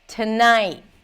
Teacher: Notice what you did here with tonight, where the T is aspirated to night. And the final T is kind of like swallowed or nasalized almost.